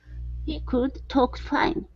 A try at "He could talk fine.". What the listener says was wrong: Okay, open your mouth for that vowel sound. Instead of could. He could talk fine.